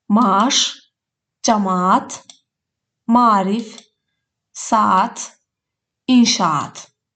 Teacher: Eyni cinsli qoşa saitli sözlərdə qoşa saitlər bir uzun sait kimi tələffüz olunur. · Əgər səsin yanında iki nöqtə varsa, bu işarə səsin uzun tələffüz olunduğunu bildirir. Sözdə iki A saiti yanaşı gələrsə, bir uzun A səsi kimi səslənir.